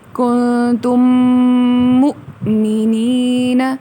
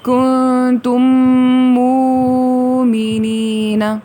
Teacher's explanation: ایک تھوڑا جھٹکا، جس طرح حمزہ کی آواز آتی ہے اس طرح سے دے کے اس کو بولا جائے گا. کنتم مؤمنین، نہ کہ کنتم مومنین.